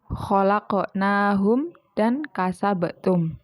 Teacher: Biasanya itu di tengah kalimat. Lah, cara membacanya itu dengan pantulan yang tidak terlalu kuat. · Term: qalqalah sugro